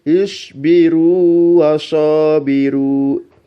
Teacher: Kita tidak boleh membaca isbiru wasabiru, tapi bacalah ya runya, ru itu dibaca panjang wawu sukunnya dengan dua harokat. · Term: matobi'i